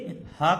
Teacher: जहां हमारा स्वरतंत्र है, जहां से आवाज निकलती है, वहीं से ह का भी उच्चारण होता है, इसीलिए इसको अलग से स्वरतंत्री में रखा गया है।